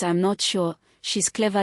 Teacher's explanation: the voice falls then rises. Used to show reservation, doubt, or contrast. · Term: Fall rise intonation